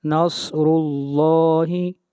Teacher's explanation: صاد حروف مستعلیہ میں سے موٹا پڑھیں گے